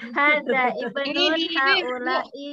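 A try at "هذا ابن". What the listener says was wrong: Alifnya alif wasal jadi enggak boleh dibaca hadza ibnun, jadi hadza bunun.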